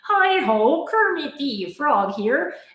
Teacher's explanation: But the way that I'm making that sound is I'm manipulating my tongue. I'm contracting my tongue and I'm putting pressure at the base of my tongue onto my cords and that's how I'm getting that sound